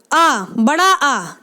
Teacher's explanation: विवृत स्वर होते हैं जिनके उच्चारण के समय मुंह जो है पूरा खुलता है, मुंह हमारा पूरा खुलता है, वे विवृत स्वर होते हैं।